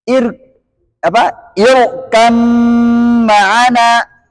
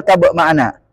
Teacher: Mim punya dengung, ba nggak punya dengung. Sama, maka beda sifat. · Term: idghamkan